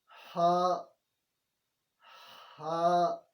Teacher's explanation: ہا یہ حلق ہے نا، حلق، حلق کے درمیان سے ادا ہوتا ہے، تو کوشش کریں درمیان سے پڑھنے کی.